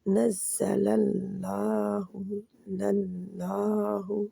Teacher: नज़्ज़लल्लाहु लल्लाह, लाम पहला जो नज़्ज़ला का लाम है जी बारीक ही रहेगा। आगे अल्लाह के नाम का लाम मोटा हो जाएगा